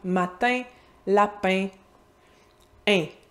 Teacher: Le in, c'est la version nasale du son est.